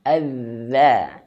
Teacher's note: dia memiliki sifat arrukhuwah. Artinya dia mengalir anginnya. Bukan nafas ya, tapi angin.